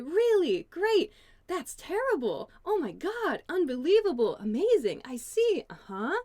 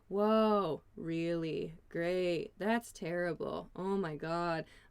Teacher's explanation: with upward intonation they sound like you're interested in the conversation